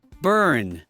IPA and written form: bɝn (burn)